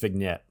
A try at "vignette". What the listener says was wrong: you don't you don't pronounce the G typically